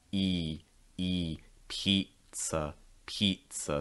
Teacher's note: to make that long i sound your mouth is mostly closed and you're raising the middle of your tongue very high